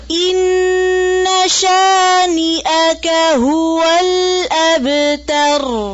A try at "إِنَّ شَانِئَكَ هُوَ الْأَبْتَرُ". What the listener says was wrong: इस हमजा को वाज़े करें। अब कोई शानिया का नहीं पड़े इसको, ठीक है? अक्सर लोग यही गलती करते हैं ना, शानिया का पढ़ते हैं, तो शानिया का, ठीक है? हमजा है, या नहीं है यहाँ पर।